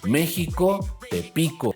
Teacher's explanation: La naturalidad del acento de estas palabras prohibiría la coincidencia total de fonemas a nivel rítmico, puesto que México es una palabra esdújula, es [música] decir, que su acento natural está en la antepenúltima sílaba · México es una palabra esdrújula, es decir, que su acento natural está en la antepenúltima sílaba